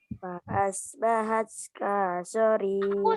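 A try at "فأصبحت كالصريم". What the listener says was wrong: Nah, ini kaknya langsung ke so ya, ada tasydid jadi ditekan. Kasorim. Coba ulangi.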